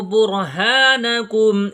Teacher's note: را ساکن سے پہلے حرف کے اوپر پیش آیا ہے، اس لیے اس کو پر پڑھیں گے